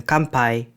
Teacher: it assimilates to m before pa and ba as in kanpai